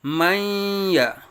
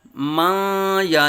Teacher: نون اور یا کو ملا کے مدغم کر کے یہاں ادغام کا قاعدہ کرنا ہے